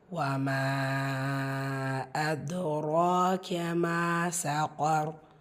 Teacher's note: ஸோ இதில் மத்துக்கு அப்புறமா அடுத்த வார்த்தையோட தொடக்கத்தில் ஹம்சா வந்திருக்கு. ஸோ இது மத்து முன்ஃபசிர் 4 ஹரக்கத்தளவு நீட்டம் கொடுத்து ஓதணும்.